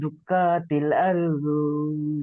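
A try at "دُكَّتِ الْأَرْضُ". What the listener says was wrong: দুক্কাতিল আরদু, দুক্কা বলে কাপ টান দিচ্ছেন, দাল কাপে দুক, কাপ যাবার কা, কাপ টান হবে না, এই কাপের উপর যাবার আছে, টান হবে না। কাল্লা ইজা দুক্কাতিল, কাপের উপর যাবার থাকলে টান হয় না।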